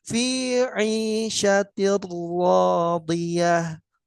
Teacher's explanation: ti-nya tipis, ra-nya tebal